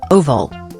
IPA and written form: ˈoʊvəl (Oval)